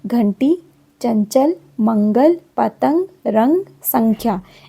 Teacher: और जो अर्धचंद्र है उसको बोलते हैं आगत ध्वनि। स्वर अनुस्वार जो है वह नाक से बोला जाता है।